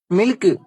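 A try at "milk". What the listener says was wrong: டேய், அதை ஏன்டா சில்க் மாதிரி சொல்ற? கே நல்லா மென்மையா சொல்லணும். மில்க்.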